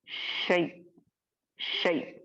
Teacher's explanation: हल्का सा हमजा साकिन को झटका देकर स्टॉप करेंगे, इसी को नब्र कहते हैं।